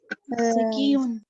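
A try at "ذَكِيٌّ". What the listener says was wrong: ज़की उन नहीं होता, ज़कीयुन होता है। हम इस या को ना बड़ा वो ले लेते हैं, इसको युन नहीं पढ़ते, उन पढ़ते। हाँ, कुर्सी उन पढ़ देते हैं, कुर्सी युन होता है, ज़कीयुन।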